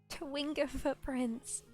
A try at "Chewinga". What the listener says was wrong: It's Chewinga with a CH.